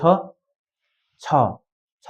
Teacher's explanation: यो छ छ छ भन्दा तपाईँको चाहिँ हत्केलामा सास आउनु पर्यो